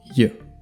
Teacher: We have the sound j, which is a voiced palatal approximant.